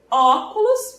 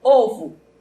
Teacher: podemos ter a vogal aberta ou fechada como em óculos perceba na minha boca que já tem uma maior abertura né